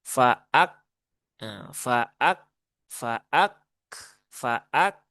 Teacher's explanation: dia punya sifat syiddah dan juga punya sifat hames. Maka ketika sukun ya tunaikan dulu syiddahnya. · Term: huruf kaf